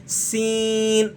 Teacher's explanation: تو سین میں اور ثا میں بھی یہی فرق ہے کہ سین کو آپ نے سیٹی کے ساتھ اور دانتوں کو بند کر کے اس کو پڑھنا ہے، سین، اس طریقے سے یہ لفظ ادا ہوگا، سین، دانتوں کو آپ نے بند کر کے کلوز کر کے اس لفظ کو ادا کرنا ہے اور سیٹی کے ساتھ ذرا پڑھنا ہے